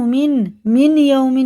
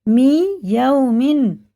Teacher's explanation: جزم ہے پھر تشدید ہے تو اسے ہجے میں لگائیں گے، نون کو رواں میں بالکل نہیں لگائیں گے، اس نون کی جگہ یا کو لگا کے پڑھیں گے ۔ میم نون یازر می، یا وازبر یو می یو، میم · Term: ادغام یا